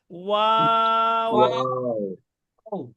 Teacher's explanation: প্রথমে ঠোঁটটা গোল হবে, ঠোঁটটা গোল হওয়ার পরে আবার লম্বা হয়ে যাবে, আবার গোল হবে